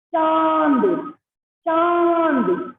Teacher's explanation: अनुनासिक का उच्चारण मुंह तथा नासिका दोनों से होता है